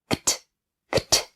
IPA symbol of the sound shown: kt